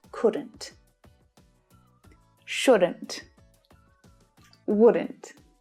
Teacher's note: and not is contracted and it sounds like couldn't shouldn't wouldn't so the not sounds like ant at the end of the modal verb